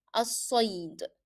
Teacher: If you see ya is carrying sukoon, so I stopped for less than a second and even you don't notice. الصيد. So you just stop and then move quickly to the following letter. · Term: A quick stop